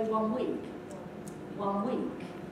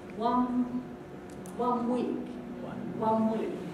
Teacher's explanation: And the one, the N at the end, has become an M. 1 week. If you watch me, I'll do it very slowly, and you can see that my lips close for the M.